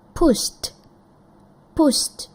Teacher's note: push itu unvoice, tidak ada getaran di tenggorokan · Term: unvoiced